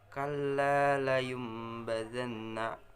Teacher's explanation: bunyi nun mati atau tanwin beralih menjadi bunyi mim dengan syarat harus dengung apabila bertemu dengan huruf iklaf. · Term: iklab